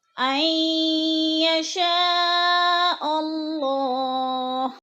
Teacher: عین یشاء پہ جو مد متصل ہے، 4 الفی مد ہے، 4 الف کے برابر ہم نے اس کو کھینچ کر پڑھنا ہے، یعنی لمبا کرنا ہے.